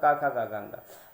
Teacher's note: तो सबसे पहले आपको क्या मिलेगा, कंठ। तो का उच्चारण स्थान क्या हो गया, कंठ हो गया, यानी कि कंठ वर्ण हो जाएंगे